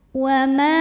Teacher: karena ada alif didahului baris fathah maka dibaca panjang mimnya 2 harokat. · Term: matobi'i zahiri